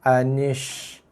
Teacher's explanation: Dia ada punya sifat tafashi. Anish. Jelaskan bunyi tafashi tu.